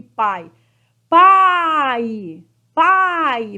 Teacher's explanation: esse I aqui não é vogal ele é semivogal